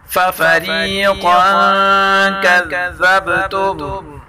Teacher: قاف کو پر پڑھیں گے، ذال کو نرم کے ساتھ پڑھیں گے اور با میں کلکلا کریں گے